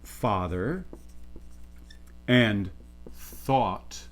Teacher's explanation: there's a distinction that usually happens for most Americans, for example, between father and thought, where there is some degree of rounding there